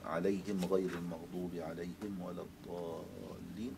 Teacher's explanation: قالون له أن يقرأ بإسكان الميم